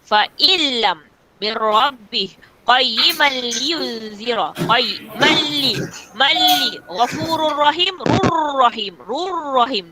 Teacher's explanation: bunyi nun ni sudah ditelan oleh huruf bila gunnah. Sudah ditelan oleh lam, sudah ditelan oleh ra.